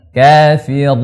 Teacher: Ketika di nunnya baru dia ke hidung.